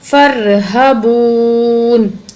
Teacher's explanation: نون زیر نی، فرہبونی، واو ساکن سے پہلے پیش حروف مدہ، ایک الف کی مقدار کھینچیں گے واو کو